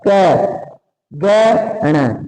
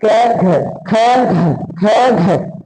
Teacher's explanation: पहला तीसरा और पांचवा यानी कि ये तीनों वर्ण ही किसके आधार पे गिने जाएंगे अल्पप्राण गिने जाएंगे क्योंकि इनको बोलते समय कम समय लग रहा है